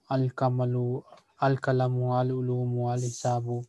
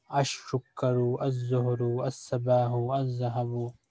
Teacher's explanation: in Huruful Shamsiya, lam becomes silent